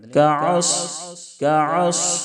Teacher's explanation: صاد کو ہمیشہ پر کریں تاکہ سین سے نہ بدلے۔ کعص کعص اس طرح سے صاد کو موٹا کریں گے۔